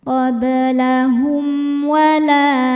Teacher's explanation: La hukumnya mad thabi'i dzahiri, sebab ada alif didahului harakat fathah. Cara bacanya panjang dua harakat.